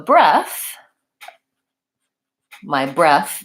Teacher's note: breath the noun has a voiceless th sounds like breath same sound as in teeth and both etc